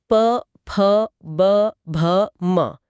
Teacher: इन्हें बोलने के लिए दोनों होठों का मिलना जरूरी है, इसलिए ये ओष्ठ हैं।